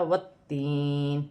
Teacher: وقف کی صورت میں زیر گر جائے گی اور نون ساکن ہو جائے گی، یا ساکن سے پہلے زیر ہے تو یا مدہ بن رہی ہے، اسے ایک الف کی مقدار کھینچ کر بھی پڑھا جائے گا۔ تا مشدد ہے، جماؤں کے ساتھ پڑھا جائے گا، 2 مرتبہ پڑھا جائے گا،